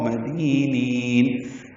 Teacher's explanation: دی یا مدہ ہے، دو حرکات لمبا کرنا ہے. نین میں نی کو لمبا کریں گے، وقف المد عارض بالسکون ہے.